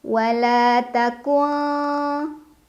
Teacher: ikhfa ab'ad karena ada nun sukun yang bertemu dengan huruf Kaf dibaca Nun sukunnya samar-samar ke Kaf sambil berdengung